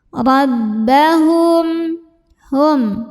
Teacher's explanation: Dan masuk ke ba kita tekan di bibir, jangan sampai ada suara masuk hidungnya.